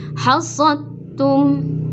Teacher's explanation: Ini namanya berarti idgham kamil, sempurna, memasukkan ke huruf berikutnya. Hasadtum, tidak ada pengucapan atau sifat dal yang tersisa, langsung ke ta. Hasadtum, tidak hasadtum.